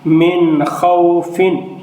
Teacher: اب اس نون ساکن کے بعد حروف حلقی میں سے خا ہے، اس لیے یہاں بھی نون میں اظہار ہوگا، غنہ نہیں ہوگا